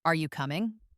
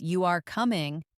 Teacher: For example, listen to the difference in sound when someone asks, "Are you coming?" The voice typically goes up at the end, signaling a question, inviting a response. Compare that to how it sounds when they make a simple statement, such as "You are coming," where the voice usually goes down at the end, indicating finality, a complete thought. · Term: raise their voice